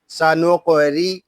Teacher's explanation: پڑھیں گے، اس کو پڑھیں گے سانوق، را زیری، سانوق ری، یہاں را کو باریک پڑھیں گے کیونکہ را کے نیچے زیر آ گیا ہے